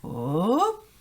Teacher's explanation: rising intonation which is a rise in a person's voice